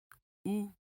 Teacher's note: your lips are rounded but not as forward as oh